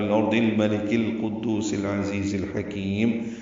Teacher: ان سارے الفاظ میں الارض سے لے کر الحکیم تک اظہار قمری ہو رہا ہے، سارے لام پڑے جا رہے ہیں